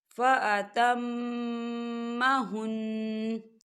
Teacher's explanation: میم مشدد ہے تو یہاں غنہ ہوگا